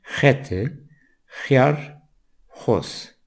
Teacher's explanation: Son sessiz harfimiz, 4 harfin son sesi X dediğimiz ve Zazaca'da H sesini veren, G'ye yakın, daha yumuşak bir ses